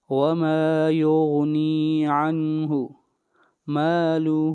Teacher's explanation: یہاں پر مد منفصل ہے، اس کو 3 الف کے برابر کھینچ کر پڑھا جائے گا